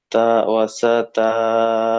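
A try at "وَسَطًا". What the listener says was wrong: তা নয়, তো লাম দু জেবার তল, ওয়াসাতল।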